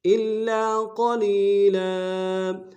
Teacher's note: گے، لام کے اوپر تنوین ہے غنہ کریں گے، الا قلیلا وقف میں تنوین کو الف سے بدلیں گے